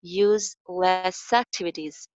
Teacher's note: Useless ki ending s sound hai, so isko next sound mein link kar diya jayega